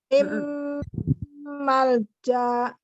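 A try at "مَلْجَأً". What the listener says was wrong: Enggak. Mim malja. Langsung ja, karena jimnya satu harokat.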